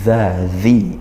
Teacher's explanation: Nah, bertemu zal di sini yaumin zi, langsung seperti itu ke zal, makhrajnya di ujung gigi seri, ujung lidah bertemu ujung gigi seri atas. Zi ya, zi panjang satu alif juga kasroh tidak sukun, ini mat tabi'i.